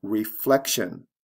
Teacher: the stress changes in the same way and then reflection where the stress comes right before the tion ending